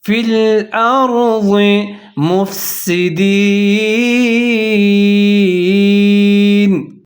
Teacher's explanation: یہاں پر ضاد کو اپنے موٹا کر کے پڑھنا ہے اور را بھی موٹا کر کے پڑھا جائے گا کیونکہ را ساکن سے پہلے حمزہ کے اوپر زبر ہے، فی